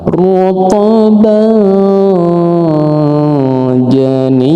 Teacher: Fathah dua berjumpa dengan jim. Maka hukum bacaannya adalah ikhfa hakiki. Harus disamarkan